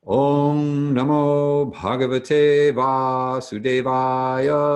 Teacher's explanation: the dot over the M indicates that we close the back of our tongues to the back of the roof of our mouths at the same time that we bring our lips together